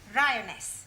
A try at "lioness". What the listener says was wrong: No, l. You're not saying it right. Try saying lioness. Well, in future, every time you see an L, pretend it's an R, right?